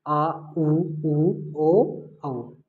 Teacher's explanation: जिन स्वरों का उच्चारण करने पर जीभ का जो पीछे वाला भाग अधिक सक्रिय होता है वो पश्च स्वर हो जाएगा। तो ये जीभ के आधार पर हैं, तो जो अग्र स्वर है उसमें आगे का भाग सक्रिय होता है, मध्य में जीभ का बीच वाला भाग अधिक सक्रिय होता है और जो पश्च स्वर होता है उसमें जीभ का पीछे वाला भाग अधिक सक्रिय होता है।